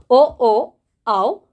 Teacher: ಅಕ್ಷರಗಳು ಕಂಠ ಮತ್ತೆ ಓಷ್ಟ ಅಂದ್ರೆ ತುಟಿ ಇವುಗಳ ಸಹಾಯದಿಂದ ಹುಟ್ಟುವ ಕಾರಣ ಇವುಗಳನ್ನ ಕಂಠೋಷ್ಟ ವರ್ಣಗಳು ಅಂತ ಕರೀತೇವೆ